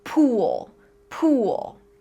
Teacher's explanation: So our tongue should be high and in the back of our mouth. And when we pronounce the sound ooh like in pool, our tongue is going to be tense.